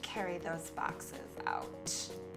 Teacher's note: Little vocal fry in there.